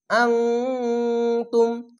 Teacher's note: এখানে ইকফা গুণা বাংলা অনুষ্কারমত হবে